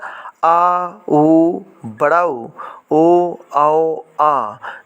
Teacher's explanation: जीभ का पश्च भाग काम करता है, इसलिए इसे पश्च स्वर कहा जाता है